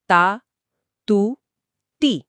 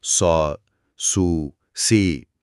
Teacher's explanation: تے پتلی ہے اور صاد بھاری، لیکن دونوں صورتوں میں آواز کو ٹھیک 2 گنتی تک روک رہا ہوں. تا اور سا کا دورانیہ ایک ہی ہے.